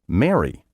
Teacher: you may pronounce the adjective meaning happy spelled m-e-r-r-y the verb meaning to wed spelled m-a-r-r-y and the name spelled m-a-r-y all in the same way